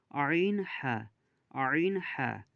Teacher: ২ নম্বর মাখরাজ হচ্ছে হালাকের বা কণ্ঠনালীর মাঝখান হতে উচ্চারিত হয় আইন হা